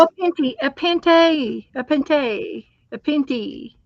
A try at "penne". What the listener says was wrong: There's no T though. Is it pronounced with it?